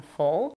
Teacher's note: we have the LAX o in full